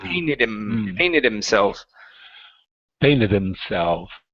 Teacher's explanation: Instead of instead of hitting an N sound, it's an M.